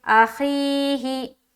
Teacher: ایک الف کے برابر کھینچ کر پڑھیں گے، جیسے اخی، ہی ہا کے نیچے زیر کی حرکت ہے، زیر کو جلدی پڑھیں، تھوڑا بھی نہ کھینچیں، معروف پڑھیں، مجہول آواز سے بچیں